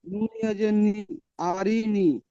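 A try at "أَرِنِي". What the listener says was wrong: নুন ইয়াজের নি, এটা টান আছে, এটা টানবেন।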